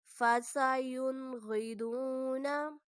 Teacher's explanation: نون ساکن کے بعد غین ہے اور غین حروف حلقی ہے، اس لیے یہاں پر بھی ہم غنہ نہیں کریں گے